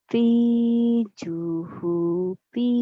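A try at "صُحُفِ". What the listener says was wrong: Kenapa jadi juhupi? Nggak ada jim di situ mah.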